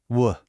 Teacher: your teeth aren't involved at all. You just round your lips. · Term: W sound